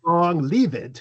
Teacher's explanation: And then if you're adding an ed ending, that has its own syllable. And the F would have changed to a V because it's between two vowels